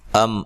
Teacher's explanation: ام میم ساکن کا اظہار ہے، غنہ نہیں کریں گے.